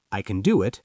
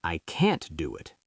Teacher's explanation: So the positive is weak. I can do it. And the negative is strong.